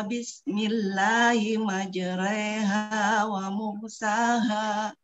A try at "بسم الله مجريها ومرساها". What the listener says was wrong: إيمالي أكثر حتى لا تكون تقليل، وهذه الوحيدة التي ترعى لحفص.